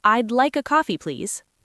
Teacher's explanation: The word please should have a clear Z sound at the end, not an S.